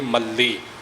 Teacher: ਮਮੇ ਦੇ ਉੱਪਰ ਵੀ ਅਦਕ ਦਾ ਪ੍ਰਭਾਵ ਦੇ ਕੇ ਮਲੀ